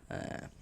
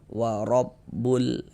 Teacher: Huruf ro memiliki tanda baca fathah, maka ini huruf ro dibaca tafkhim, dibaca tebal.